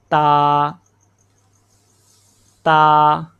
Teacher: زبان کی نوک اوپر والے دو دانتوں کی جڑوں کے ساتھ لگے گی. ٹھیک ہے، یہاں پہ پہلے زبان کی نوک کو اوپر والے دونوں دانتوں کی جڑوں کے اوپر رکھیں، پھر بولیں تا تا.